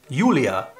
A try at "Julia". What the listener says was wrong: Yeah, that's the German version again. No J, but Y.